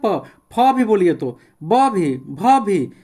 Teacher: प दोनों ओठ सट जाता है, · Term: ओष्ठ